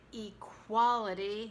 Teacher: we don't really say the E, it's reduced in equality